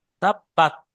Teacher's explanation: তার উপরে কিন্তু সাকিন আছে, তাহলে কোনো কারণে যেন তাব্বাতি না হয়ে যায়, জের না হয়ে যায়